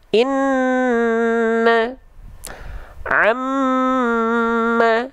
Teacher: Kalau nun dan mim ketika bertasydid mereka memang ditahan 2 harokat. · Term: gunnah